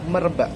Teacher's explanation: lalu diberi tanda plus lagi dan ba kata ba ditulis biasa lalu ka diganti dengan glotal karena ka pada akhir suku kata tertutup diganti dengan glotal